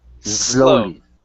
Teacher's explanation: you don't want to use a Z sound. You want to use a Spanish S.